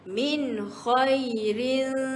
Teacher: Kat sini bunyi dia min tanpa sebarang dengung